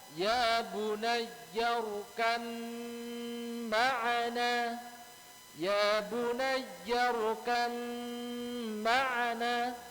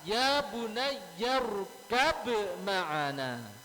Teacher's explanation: Ini diidghamkan. Ba-nya diidghamkan ke huruf mim. Ba diidghamkan ke huruf mim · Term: Idgham mutajanisain